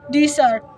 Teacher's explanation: In the word desert, verb meaning to abandon, the stress shifts to the second syllable desert. By emphasizing different syllables, the meaning of the word changes, illustrating how crucial word stress is for clear communication.